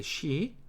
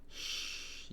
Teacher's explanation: 입 천장하고 혀가 가까이 붙으면서 바람을 슉 보내는 거죠. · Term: she라는 발음